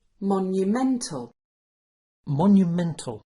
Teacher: Now the word stress is in the middle and the sound is ment instead of munt.